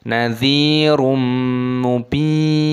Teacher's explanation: nunnya dimatikan, baknya dipanjangkan dua ketukan · dhammah tanwin bertemu dengan mim hukumnya dibaca idgham bi gunnah